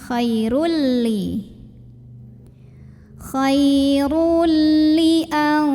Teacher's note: Maka tanwin dhammah ini lebur atau masuk ke lam tanpa disertai dengungan. Jadi artinya ini kita cukup tekan aja, jangan ditahan ya. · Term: idgham bila gunnah